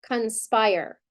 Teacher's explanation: So that O is flexing to the schwa